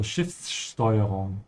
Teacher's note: So again here the S before a T is a sh sound.